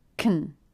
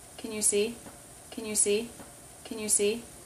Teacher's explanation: See is the main verb. Helping verbs will usually be unstressed, and can likes to reduce when it's unstressed to kn. K sound, schwa, n.